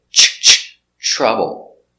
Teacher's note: TR is pronounced with the ch sound like chicken.